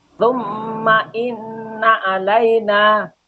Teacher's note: termasuk bacaan hunnah musyaddadah. Alasannya ada nun tasdid, mim tasdid, nun tasdid. Cara bacanya dengung tiga harokat.